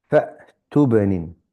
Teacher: There's a ba with sukoon, so we need to recite it with qalqala.